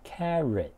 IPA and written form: ˈkær.ət (Carrot)